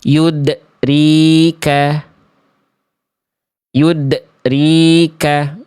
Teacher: dia sudah memantul teman-teman, tapi pantulannya itu di ujung pelafalan kayak ada remnya. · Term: pantulan yang tertahan